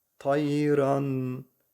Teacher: tayran tenvinden sonra ishar harflerinden olan Elif harfi gelmiş Dolayısıyla burada Nunu açık bir şekilde okuyoruz